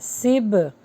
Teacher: یہاں پر ہوگا قلقلہ کیونکہ با کے اوپر جزم ہے